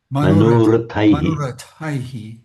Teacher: the shadow vowel at the end, you can hear it, but it's very, very light